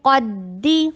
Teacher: قاف کو ہیوی، دال کو ہیوی نہیں کرنا